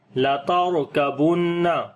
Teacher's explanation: را کو یہاں موٹا پڑھیں گے، را کے اوپر جزم ہے، اس سے پہلے زبر ہے